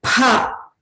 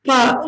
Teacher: Pha is a mahaprana. Pa is a alpaprana.